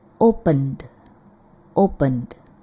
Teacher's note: Ketika kita mengucapkan n, ada getaran di tenggorokan. This is a voiced sound.